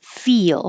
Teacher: you slide down and make a y feel as your tongue curls back up for the L